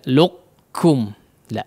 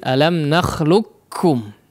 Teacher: Namun yang lebih masyhur adalah ya, di sini disebut dengan idgham atau masuk kepada idgham kamil ya, artinya seluruh sifat huruf qaf tidak terlihat lagi ya, atau masuk kepada huruf kaf semua ya. Karena apa ya, di sini dijelaskan ya, karena salah satu sebabnya adalah huruf qaf hanya memiliki sifat isti'la ya, tidak memiliki sifat itbaq.